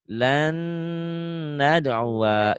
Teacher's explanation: Berbedanya jadi di sini bacanya kalau ini kan lan nadua kan lan nadua dibacanya menjadi lan nadua gitu ditahan dengung ke hidung